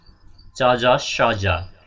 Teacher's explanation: The sounds which are produced by the tongue and back of the अल्भेलरिज। अल्भेलरिजको back अलिकति पछाडिपट्टि सुनि भयो, त्यसलाई के भन्छ, प्यालेटल अल्भेलर साउन्ड्स।